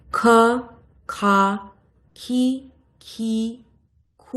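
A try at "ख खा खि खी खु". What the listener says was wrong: না না না, দেখুন, আপনি উচ্চারণ করছেন, আপনি হ্রস্ব দীর্ঘ নির্ধারণ করতে পারছেন উচ্চারণে? এমন বলতে হবে যাতে দুটো স্পষ্ট বোঝা যায় যে আমি একটা হ্রস্ব উচ্চারণ করছি, একটা দীর্ঘ উচ্চারণ করছি। আমার উচ্চারণ দেখুন, আ, আ, ক, কা, কি, কি, কু, কু, এইভাবে।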